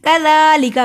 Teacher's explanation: काफ मरकज़ वाला बारीक पढ़ा जाता है